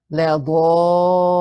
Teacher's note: And when that happens, we have the strongest type of mud that we have in Tajweed, and that is mud lazim kalimi muthaqqal, meaning lazim, compulsory for you to extend it to 6 counts.